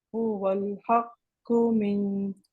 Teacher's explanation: don't prolong, don't lengthen the qu at the end